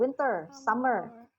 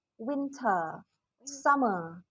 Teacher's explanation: Tapi kalau di British ini jadi winter, summer. R-nya nggak terbaca, tapi jadi bunyi vokal itu jadi panjang.